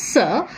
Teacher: we have the air coming out through the wide glottis. It's a voiceless sound, and then it cannot go into the nasal cavity because the soft palate is raised. The air then goes out into the oral cavity and passes out through the narrow gap between the two articulators, the alveolar ridge and the tip and blade of the tongue, with friction producing the fricative sir.